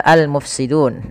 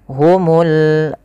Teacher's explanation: alif lam yang kita tulis dan kita baca dengan jelas suara lamnya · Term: alif lam qamariyah